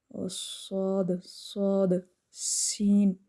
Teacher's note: سین اور صاد بھی حروف صفیریہ میں سے ہیں، سین صاد اور زا، از، دیکھیں بزنگ ساؤنڈ آتی ہے